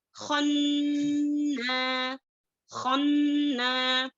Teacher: نون شدہ کے حالت میں ہے تو 2 ہو گئے، اور خن میں کیا ہے غنہ کرنا ہے